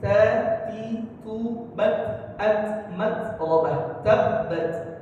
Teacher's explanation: makhraj huruf ta itu adalah ujung lidah kita ya ujung lidah menempel ke mana? Ke gusi. Ke gusi gigi atas.